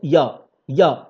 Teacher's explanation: मुंह से डायरेक्ट बीच से चला गया, ठीक, य कहीं से टच नहीं कर रहा, बीच से। र देखिए डायरेक्ट निकल गया मुंह के भीतर से। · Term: अंतस्थ व्यंजन